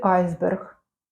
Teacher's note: Звук з є в слові айсберг за рахунок уподібнення.